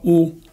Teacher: the vowel u in a high back position